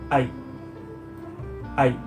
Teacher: Bunyi I termasuk ke dalam bunyi diftong, yaitu dua vokal yang dibaca satu bunyi. Bunyi I termasuk ke dalam diftong naik, yaitu diucapkan dengan cara memposisikan lidah lebih tinggi dari yang pertama.